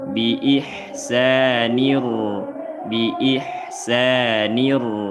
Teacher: Karena dibaca tafhim berharakat fathah maka tasdidnya langsung tebal. Ro di ni kena tebalkan di jangan baca di jangan tertukar jadi dal. · Idgham bila ghunah. langsung dileburkan bunyi tanwin nun sukun kepada ro